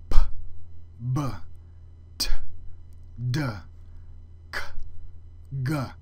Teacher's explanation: We'll start with the stops. All of these phonemes are produced with a full closure of the airstream.